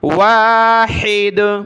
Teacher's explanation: हा निकालेंगे गले से